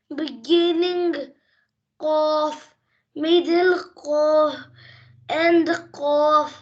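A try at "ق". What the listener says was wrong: MashaAllah. Next.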